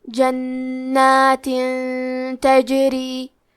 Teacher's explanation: ہم تنوین کو چھپاتے ہوئے اور غنہ کے ساتھ یہ حکم کو ادا کریں گے۔ جنات تجری، کلمت تجری میں حرف الجیم کو قلقلہ سے پڑھیں گے، را کے نیچے زیر ہے تو را کا حکم ہے ترقیق، مطلب ہمیں حرف الرا کو پتلی آواز میں پڑھنا ہے۔ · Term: اخفاء